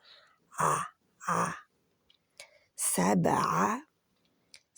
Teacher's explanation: عین کو جلدی پڑھنا ہے اور حلق کے یعنی کہ گلے کے درمیان سے ادا کرنا ہے اس کو. آ آ سبع سما، سین چھوٹا رہے گا، زبر ہے.